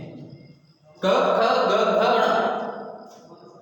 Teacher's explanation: इनका उच्चारण स्थल क्या है? कंठ, और इन्हें कंठस्थ व्यंजन कहते हैं।